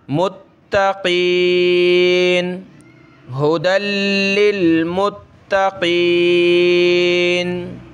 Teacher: تا کے اوپر تشدید ہے، تا کو بھی سخت کریں گے. متقین، قاف کو موٹا کریں.